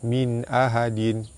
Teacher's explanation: nun mati bertemu dengan hamzah, hukum dia izhar halki, terang jelas tanpa dengung